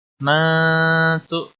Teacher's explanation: نون ساکن کے بعد حروف اخفا کا تا آیا ہے، اس لیے اخفا حقیقی ہوگا، گناہ کے ساتھ پڑھیں گے۔